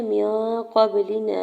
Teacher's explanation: میم کے زیر کو نون ساکن کے ساتھ ملاتے ہوئے نون ساکن پہ اخفا کریں گے۔ قاف کے زبر کو با ساکن کے ساتھ ملاتے ہوئے با ساکن پہ کلکلا کرنا ہے۔